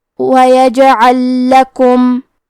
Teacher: ہم لام ساکن کو دوسرے لام میں ملا کے ایک ہی لام تشدید کے ساتھ پڑھیں گے۔ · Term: ادغام